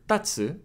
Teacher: if you stress the first character Tatsu it means to stand but if you reverse the stress then you put it on